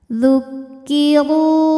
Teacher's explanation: karena berbaris dhammah, maka ra dibunyikan dengan tebal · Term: tafkhim